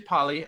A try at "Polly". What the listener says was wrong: Polly. With an A vowel, not an O vowel.